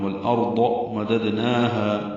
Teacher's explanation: دال ساکن ہے، قلقلہ ہوگا